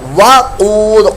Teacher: قاف پر موٹی آواز اور دال ساکن میں قلقلہ